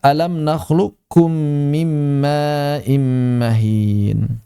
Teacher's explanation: Maka wajib di sini idghamul qof. mengidghamkan qof fil kafi ke dalam kaf